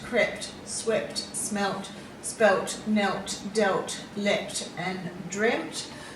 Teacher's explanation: doing the usual thing where we usually just add a d this time we're adding a t and changing the vowel sound into a short vowel sound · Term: irregular verbs